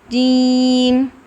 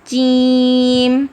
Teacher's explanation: ٹھیک ہے، اور ایک بات کا آپ نے خاص خیال رکھنا ہے، اس میں ایئر فلو بالکل بھی نہیں ہے. اگر جیم ادا کرتے ہوئے ایئر فلو آئے گا تو اس میں چا کا ساؤنڈ آ جائے گا